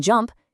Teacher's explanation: In jump, you hear the m and the p. They just slide right into each other. They blend. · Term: final blend